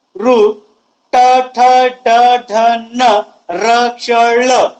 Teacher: आणि या वर्णांचा जेव्हा मी उच्चार करतो त्यावेळेस मूर्धा या भागाला स्पर्श करून उच्चार होतो, म्हणून या वर्णांना मूर्धन्य वर्ण असं म्हटल्या जाते